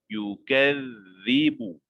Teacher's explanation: Ada nabrah penekanan kerana ada syaddah. Yukadzibu. Keluarkan lidah sedikit.